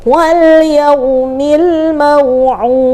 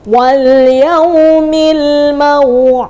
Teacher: Termasuk huruf dal adalah masuk ke huruf qalqalah. Maka harus ada pantulan, dan ingat pantulannya tidak boleh ada harful hamzah atau penambahan huruf hamzah.